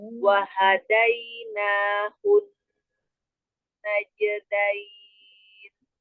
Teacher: Ketika hu-nya langsung masuk ke na, jangan hu dipanjang.